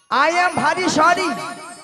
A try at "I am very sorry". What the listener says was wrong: I am ভারী নয় মাসি, বলো আই এম ভেরি সরি।